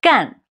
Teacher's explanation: It's a verb meaning to do. 干, a falling tone.